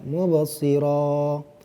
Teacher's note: Setiap huruf yang berharokat fathatain, an, mubasiron, kemudian diwakafkan, diberhentikan. Jadi huruf ujungnya tadi diganti dengan bacaan panjang. Panjangnya dua harokat, mubasiro. Jadi ini namanya mad iwad anit tanwin.